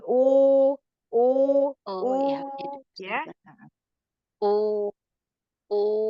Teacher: dia suaranya keluar, vokalnya keluar makanya tipis, tidak tertahan di dalam mulut, tidak tertahan di langit-langit gitu ya suaranya tidak mengarah arah suara kalau istifal dan istillah itu jadi arahnya tuh ke ee ke keluar ke bawah.